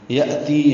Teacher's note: یأتی حمزہ ساکن جھٹکے سے، تی مد منفصل ہے کیونکہ یہ یا مدہ ہے، اور اس کے بعد آ میں نا کا کھڑا زبر حمزہ آیا ہے تو تی کو لمبا کریں گے۔